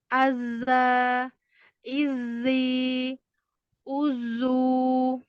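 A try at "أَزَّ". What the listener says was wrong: Hati-hati punggung lidahnya naiknya nempel terus. Azza, ini nempel. Azza, nempel Nah, azza, ya jadi tajam, keluarnya tajam. Lagi jauhkan lagi punggung lidahnya.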